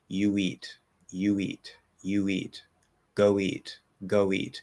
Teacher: they're both going to link with a small w